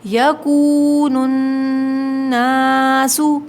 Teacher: واو ساکن سے پہلے پیش ہو، واو مدہ ہے، کھینچیں گے